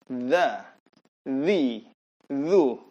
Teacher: Dha, ujung lidah seperti digigit. Kemudian disuarakan tanpa ada getaran.